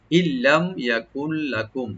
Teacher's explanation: নুন সাকিনের পর যেহেতু লাম আসছে এখানে আমরা একদম উইদাউট গুণা করব, গুণা ছাড়া একদম হবে। এর নুনটা এখানে উজ্জ থাকবে।